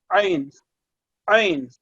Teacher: عین جو ہے وہ حلق کے اندر سے ادا ہو رہا ہے